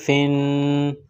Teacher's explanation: فا کا مخرج سامنے والے اوپر کے دونوں دانتوں کے کنارے کو نیچے والے ہونٹ سے ٹچ کریں گے، ملائیں گے، فا کو ادا کریں گے۔